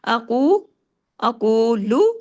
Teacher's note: قاف کو ہیوی، لام کو زیادہ نہیں کھینچنا